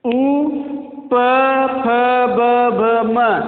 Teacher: उ, प, फ, ब, भ, म, इस सब का क्या उच्चारण स्थान है? ओष्ठ